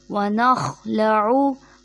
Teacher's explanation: خا حلق کے اوپر والے حصے سے ادا ہوگا، اور خا موٹے حرفوں میں سے، اس لیے اس کو ہم موٹا ادا کریں گے